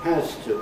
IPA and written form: ˋhæz tə (has to)